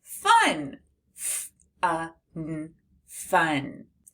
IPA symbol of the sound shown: f